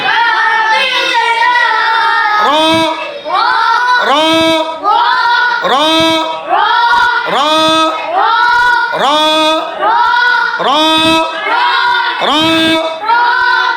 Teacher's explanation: জিহ্বার আগার পিঠ তার বরাবর উপরের তালুর সঙ্গে লাগিয়ে র হরফটি উচ্চারিত হয়